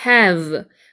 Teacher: V 발음 아랫입술에 윗니를 물고 살짝 물고 바람을 내면서 진동 떨리는 소리 소리 들어오면서 이 V 발음할 때 단소 불듯이 이렇게 떨려야 되거든요.